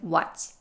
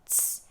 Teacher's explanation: Make sure to say that T and then quickly transition to an S. Tss, because that T at the end is not stopped.